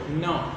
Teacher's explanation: જુઓ ન, તો એ ન ની અંદર જે અ છે ને એ થોડુંક નાસિકા પરથી છે, એટલે કે બંને દાંત અને નાક એ બંને જગ્યાએ ત્યાં નીકળે છે.